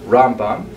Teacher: Rambam is pronounced with the emphasis on the first syllable